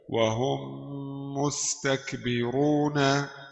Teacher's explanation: ميم ساكنة مدغمة في الميم المضمومة بغنة حركتين